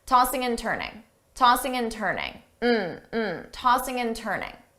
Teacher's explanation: We have and, so remember, same thing as before, tossing in, I can change that to but I have to connect it to the word before, tossing and turning. So I will say all 3, tossing and turning, as one word.